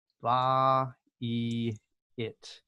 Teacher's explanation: And I think this one might be the hardest one, just because really this is going to sound like ba, e, it. So you've got 3 vowel sounds together, and they need to be separate.